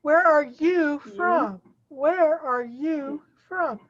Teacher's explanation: you're going to put stress on you and from